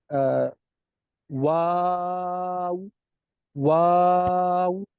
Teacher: شروع میں بھی اور اینڈ پر بھی واو میں ہونٹوں کو گول کریں گے, بیچ میں جو ہے وہ آ کرتے ہوئے منہ کھول دیں گے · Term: ہونٹوں کی گولائی